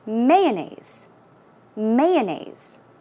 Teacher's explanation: So I put stress on the first syllable.